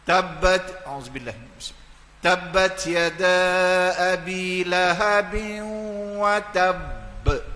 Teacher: Bila berada di akhir, kita wakaf berakhir dengan baris mati. Itu qalqalah akbar, lebih besar lagi.